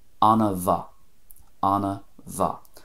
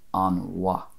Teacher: I put in a little bit of an a sound between the an and mhaith